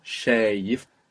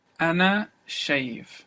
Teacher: we have the long A, shayif, and then you have that little E, little I, which is not written